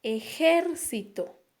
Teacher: tiene la mayor fuerza de voz en la segunda sílaba · Pero en esta palabra nosotros vamos a encontrar un acento, que es la mayor fuerza de voz que la encontramos en la segunda sílaba